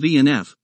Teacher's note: are produced by touching the upper teeth with the lower lip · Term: labiodental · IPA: /f/, /v/